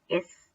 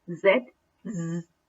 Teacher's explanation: there is no vibration of the vocal chords when you pronounce s so but when you pronounce z z definitely there is the vibration of the vocal cords